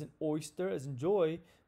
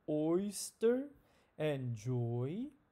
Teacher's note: move to the front oy as an oyster as in joy moves from the back middle to the front middle